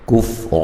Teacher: منہم الکفر، یہاں نون ساکن کا اظہار ہے، غنہ نہیں کریں گے۔ کفر، را کو موٹا ادا کریں گے، قاف کو موٹا ادا کریں گے، الف مدہ ہے